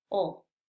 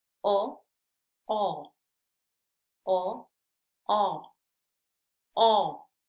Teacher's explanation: el sonido suena como un poquito más hueco verdad porque se abre más la boca